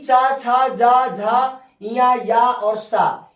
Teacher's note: ये तालु से बोले जाते हैं, जिसको हम तालव्य बोलते हैं